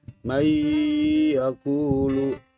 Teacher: Nun mati bertemu dengan salah satu huruf idgham biguna berupa ya, maka cara membacanya bunyi n pada nun mati harus dimasukkan ke dalam huruf ya dan disertai dengan berdengung.